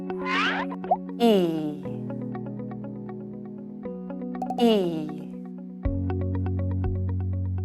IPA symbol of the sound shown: i